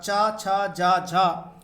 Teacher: चा वर्ग के प्रथम 4 वर्ण अर्थात च, छ, ज, झ स्पर्श संघर्षी हैं